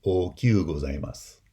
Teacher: If you were to take the adjective oki and make it hyper polite, the pronunciation would be okyu gozaimasu, where that I becomes a glide in kyu gozaimasu